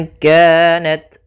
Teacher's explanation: Maka ketika ada nun mati atau huruf yang dia berharokat tanwin, an, in, un bertemu dengan tadi 15, maka kita namakan dengan ikhfa. Ikhfa itu membaca di antara izhar dan membaca di antara idgham, sehingga kita samarkan saja nunnya kepada makhraj daripada kaf. Maka bukan ingka, tapi dia ingka, langsung ke huruf kafnya.